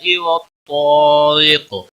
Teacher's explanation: قاف وقف کی صورت میں ساکن پڑا جائے گا، اس پر قلقلہ بھی ہوگا۔ قاف حروف مستعلیہ میں سے بھی ہے، پر پڑا جائے گا۔